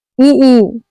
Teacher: ये स्वर तालु से बोले जाते हैं। इसीलिए इसे तालव्य स्वर कहते हैं।